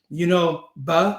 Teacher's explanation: We don't need to have it, right and left tattooed on your hands. Buh, my lips are popping